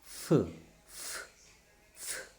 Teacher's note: This is a labiodental voiceless fricative. · Is there any vibration? There is no vibration. So that's why it is a voiceless.